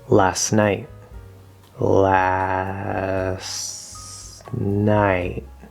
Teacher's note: connection we're going from the s sound to the n sound st at the end of a word very commonly we drop the t